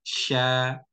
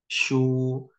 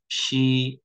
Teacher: Bibir ini hanya berpengaruh ketika berharokat saja. Kalau fathah dibuka, a, sya. Kalau domah dimajukan bibirnya, shu. Kalau kasrah diturunkan, rahang bawahnya, shi. Nah, jadi kalau dari makhraj, tiga-tiganya sama-sama dari tengah lidah. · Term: huruf sya